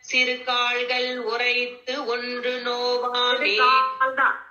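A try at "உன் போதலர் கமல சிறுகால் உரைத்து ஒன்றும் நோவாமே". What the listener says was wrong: சிறு கால்கள் இல்ல சிறுகால் உரை ஆமா, கால்கள் இல்லம்மா, சிறுகால் உரைத்து ஒன்றும் நோவாமை.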